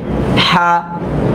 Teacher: এটা হচ্ছে হলকের মাঝখান থেকে